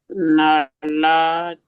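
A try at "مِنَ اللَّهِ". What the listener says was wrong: Not T, it's ha with kasra. Yes, minallahi.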